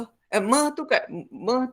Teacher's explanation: meh tu bunyi sengau dua bibir, bunyi sengau